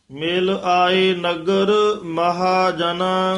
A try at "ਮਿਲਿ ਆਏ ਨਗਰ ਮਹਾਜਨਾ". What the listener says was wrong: ਹਾਂ ਵੱਖਰਾ ਪਾਠ ਕਰਨਾ ਮਹਾਜਨਾ ਇਕੱਠਾ ਨਹੀਂ ਕਹਿ ਦੇਣਾ